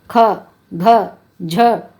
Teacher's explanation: महाप्राण व्यंजन वे होते हैं जिन्हें उच्चारित करते समय वायु अधिक निकलती है।